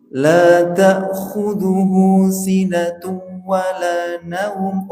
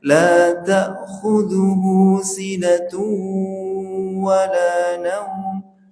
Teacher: tanwin bertemu waw itu dibaca dengung.